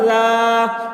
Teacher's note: ذال الف زبر ذا، الف سے پہلے زبر ہے، الف مدہ ہوا، اس لیے الف مدہ کو ایک الف کے برابر کھینچ کر پڑھیں گے